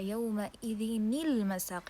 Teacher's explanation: we will apply the first part of the tanween, which is the noon, and then we will add a kasra to the noon.